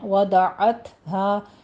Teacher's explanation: عین وسط حلق سے ادا کیجیے اور تا کے اوپر حمز کرنا ہے